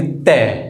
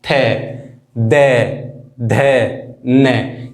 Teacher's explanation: दंत, अब हमारा दंत यानी कि जीभ जो है हमारी दांतों पर आके लगेगी, दंत यानी कि ते, हमारी जीभ जो है वो दांतों पे स्पष्ट हो रही है